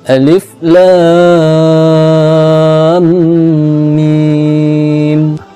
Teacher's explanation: Mad lazim harfi mushba' terdapat pada huruf-huruf muqata'ah atau disebut juga dengan huruf-huruf fawatihus suwar, yaitu huruf-huruf di permulaan surah. Cara membacanya wajib dipanjangkan 6 harakat